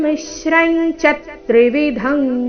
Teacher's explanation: ತ್ರಿವಿಧಂ ಕರ್ಮಣ ಫಲಂ ಭವತ್ಯ ತ್ಯಾಗನಾಂ ಪ್ರೇತ್ಯನತು ಸನ್ಯಾಸಿನಂ ಕ್ವಚಿತ್ ಮೂಲಗೀತೆಯ ಪ್ರಕಾರ ಹಾಡಬೇಕಾದರೆ ಮೊದಲನೇ ಚರಣದ ಕೊನೆಯ ಅಕ್ಷರ ಚ ಮೇಲೆ ಸಹ ಆಘಾತ ಬರಬೇಕು